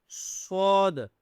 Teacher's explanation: سود کو موٹا کرنا ہے، ٹھیک ہے، سود منہ کو گول کر کے